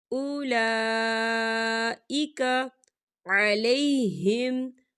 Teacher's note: لا کے اوپر کھڑی حرکات ہے اور اس پہ مد بھی ہے، تو ہم اسے 4 حرکت کے برابر کھینچ کے پڑھیں گے